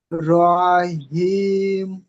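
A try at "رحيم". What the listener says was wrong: আরো টান দিতে হবে, রহিম। হাই ইয়াজির হি, মানে এটা ইয়ামাদ, তাই না? এটা ইয়ামাদ। তাহলে ইয়ামাদের পরে আমরা কি ওয়াকফু করছি, ওয়াকফুর কারণে তিন আলিফ পরিমাণ টান দিয়ে পড়বো না, রহিম।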